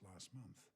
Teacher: the T in the middle gets dropped because of of the three consonants together sent cluster. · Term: dropping of the T